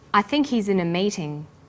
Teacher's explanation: the word think is stressed in this sentence and his is unstressed